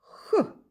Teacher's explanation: під час вимови звука х повітря зустрічає перешкоду язик та піднебіння Тому цей звук приголосний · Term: звук х